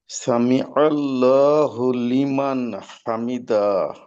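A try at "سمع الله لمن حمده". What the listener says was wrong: হামিদাহ, দালে, হ্যাঁ দালে সময় নেওয়া যাবে না। এখানে একটু স্বাভাবিকভাবে হামিদাহ, দাহ, শেষে যেহেতু, জি শেষে যেহেতু হা আছে গোল হা, তো হায়ের আওয়াজটাকে আহ, করতে হবে যথাযথভাবে।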